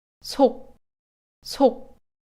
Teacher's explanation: na versão laxa existe aspiração, mas a vogal seguinte é pronunciada em um tom baixo, então ela se assemelha mais a uma laxa que a uma aspirada mesmo.